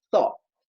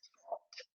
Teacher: já não vou pronunciar, né, com a língua entre os dentes vibrando. Vai ser apenas língua entre os dentes.